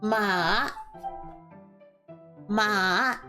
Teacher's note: now you have third tone which is a v-shaped ma